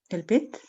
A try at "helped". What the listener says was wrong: Helped. La E no se pronuncia acá. Es helped.